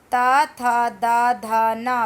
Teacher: बेटा हमारी जो टंग है वो दांतों से टकरा रही है, स्पर्श कर रही है, उसका छू रही है।